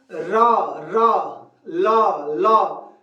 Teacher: ल तो देखिए जा के दंत मूल का अर्थ होता है दांत के जड़ में हमारी जीभ दांत के जड़ में जाके मारती है